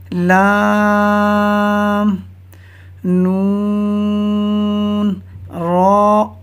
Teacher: زبان کا کنارہ اور دانتوں کی جڑ کے تالو کی جانب والے حصے سے ادا ہوتے ہیں۔